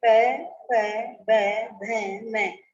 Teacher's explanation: ऐसा बोलते समय हमारे जो दोनों होठ हैं वो आपस में टकरा रहे हैं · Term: ओष्ठ